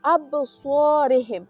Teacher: ابصارهم صوت دلته ډک لوستل کیږي، تفخیم ادا کیږي، ځکه چې له اووه حروفو څخه یو حروف صوت هم ده، له اووه ډکو حروفو څخه یو هم صوت ده، نو دلته صوت تفخیم ادا کیږي یا ډک ادا کیږي.